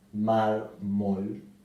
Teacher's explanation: La palabra mármol también es grave porque se acentúa en la penúltima sílaba, mármol, y también lleva tilde porque no termina en N, S o vocal.